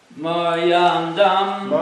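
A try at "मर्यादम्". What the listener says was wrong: No, it's no N. Maryandam. There's no N.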